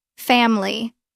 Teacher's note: the vowel that gets dropped is an unstressed vowel that comes right after the stressed syllable · Look at family. Stress is on fam. The next vowel is I. It is unstressed, so we drop it.